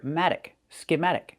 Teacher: Put the stress on the second syllable, schematic. The T changes to a fast D, we hear matic, schematic.